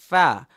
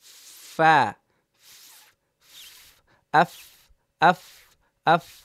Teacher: নিচের ঠোঁটের পেট সামনে উপরের দুই দাঁতের আগার সঙ্গে লাগিয়ে উচ্চারিত হয়